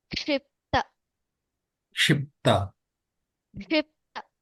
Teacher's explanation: So Kshi is the Ka sound should also be heard.